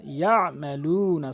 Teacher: ইয়ামালুনা এখানে চিহ্ন দেওয়ার মানে হচ্ছে আপনি এখানে অধিকাংশ হলো ইয়ামালুনা বলে, এখানে আইনের উচ্চারণটি বাদ দিয়ে ফেলে। আইনের উচ্চারণ হলকের মাঝখান থেকে